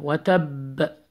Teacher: when you stop on the ba, you have to apply echo sound qalqala.